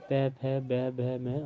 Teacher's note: दोनों ओष्ठों के स्पर्श से बोले जाने वर्ण ओष्ठय कहलाते हैं।